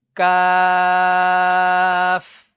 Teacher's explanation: یہ جو کش والا کاف ہوتا ہے اس کو باریک پڑھا جاتا ہے